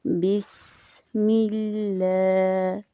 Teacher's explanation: سین میں سیٹی کی آواز نکالنا